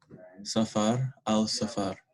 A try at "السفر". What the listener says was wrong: Do we say al-safar or do we say as-safar? So a good way to remember it if you're confused, think about in the Quran. What would you hear? As-sama, right?